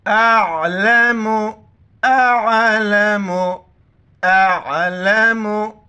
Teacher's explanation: आइन को गले से करेंगे, हमज़ा को आइन के साथ मिलाएंगे।